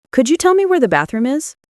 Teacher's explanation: Notice the rising intonation at the end there.